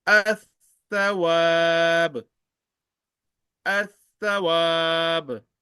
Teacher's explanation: Lam Sakina will be omitted, will be sacrificed. No sound, no sign, and don't read Lam.